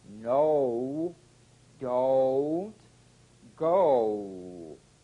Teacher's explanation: horse saw a diphthong that's two sounds blended into one oh beginning with the number two position but continuing into the smallest lip opening number one oh oh oh it's got two stages in it oh as